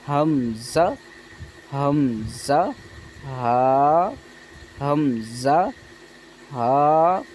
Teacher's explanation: حمزہ ہا جو ہے حلق کے نیچے والے حصے سے ادا ہوتے ہیں